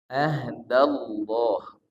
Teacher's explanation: Yaitu lafaz Allah. Lafaz Allah ini dibaca lo tebal, dibaca la tipis. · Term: lafzul jalalah